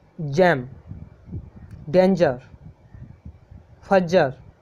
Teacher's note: इसमें अपने जो जीभ का अगला भाग है वो ऊपर तलवे तलवे की ओर जाता है, जो अपना तालु है ना उसकी तरफ जाता है। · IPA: dʒ